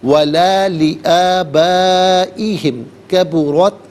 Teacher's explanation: را پر زبر ہے، را کو پر کر کے پڑھیں گے